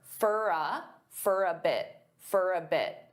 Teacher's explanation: many native speakers will combine all three of these together and they'll pronounce for as more of an unstressed for. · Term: unstressed fur